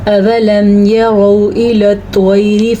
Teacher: یرو میں را کو پر پڑھیں گے کیونکہ را کے اوپر زبر ہے · الى الطير میں توا کو پر پڑھیں گے، اسی لیے نہیں کہ اس کے اوپر زبر ہے، اگر اس کے نیچے زیر ہوتی تو تب بھی ہم توا پڑھتے، توا کو پر پڑھتے۔